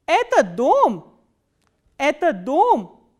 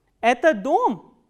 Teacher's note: you start from the medium pitch and it goes up on the word which contains the question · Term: third intonational construction